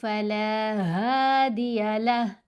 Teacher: वक्फ करेंगे, लहू नहीं पढ़ेंगे, हा को साकिन कर देंगे। खड़ा पेश के ऊपर वक्फ हो या खड़ा ज़ेर के ऊपर वक्फ आए तो लास्ट लेटर को साकिन करते हैं।